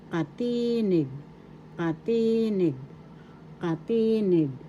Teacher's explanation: First syllable ka, second syllable ti, third syllable nig. The accent is in the second syllable